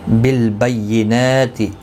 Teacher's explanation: بینات نون کے اوپر کھڑی زبر ہے، 1 الف کی مقدار کے برابر کھینچ کر پڑھیں گے